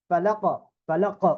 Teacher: এখানে কফের মধ্যে কিন্তু কলকলা, এরকম ডাবল সাউন্ড, এবং কলকলা হবে উপরের দিকে, ফালাক ফালাক উপরের দিকে।